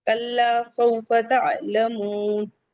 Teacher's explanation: कल्ला, सौफा वाउलीन है, تعلمون عین حلقی سے ہے، تعلمون کہیں گے، واو مدہ ہے 2 کاؤنٹ، مد العارض وقفی ہے 4 to 5 کاؤنٹ، elongate کریں گے. کلا سوف تعلمون.